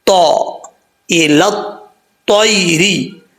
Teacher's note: زبان کی نوک اوپر والے دانتوں کی جڑوں سے لگے اور زبان اوپر والے تالو کی طرف اٹھے تو طا پڑھا جاتا ہے